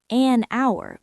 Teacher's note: >> Notice I said an hour because the h is silent, so it has a vowel sound